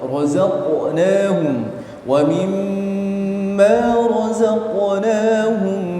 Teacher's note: qaf sukun yang ada di razaqnahum itu harus menebal dan mantul